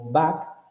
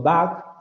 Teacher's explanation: el contraste entre estas dos secuencias lo produce solamente un rasgo que sería el rasgo de sonoridad, porque todo lo demás queda exactamente igual.